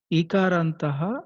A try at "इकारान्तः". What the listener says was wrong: Ikarantaha, not Ikarantaha. Short E.